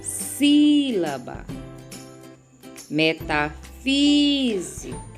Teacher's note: proparoxítonas aonde a sílaba tônica é a antepenúltima sílaba da palavra